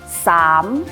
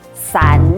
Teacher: 策略。口语测验分做3个部分：复唱、看图表达、口语表达。一样，我们会从最简单的题型，再慢慢增加难度，到比较需要延伸思考才能回答的问题。复唱就是听音，就是跟着音档念，它没有文字，仅有语音。我们要仔细的听，一定要听到叮一声响后，你才能开始念，否则录不到音，我们就没有分数了。请听范例。按到默嘅名，按到默嘅名。听到叮一声响后，开始念。按到默嘅名。看起来好像很简单，但是如果你其中的客语发音没有念标准的话，也很容易被扣分。需要特别注意的发音有：第一，声母呢的字，我们要念正确，不可以念成呢。例如，勾捻不可以念成勾捻。第二， 双唇音，收尾的字一定要闭唇